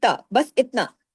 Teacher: اس میں آ کی آواز کو شامل نہیں کرنا ہے، تا ایسے نہیں کرنا ہے، زبان کو اوپر نہیں اٹھانا ہے، الف لگ جائے گا، اضافی حرف ہو جائے گا، لانے جلی حرام درجے کی غلطی ہونے کا خطرہ ہے۔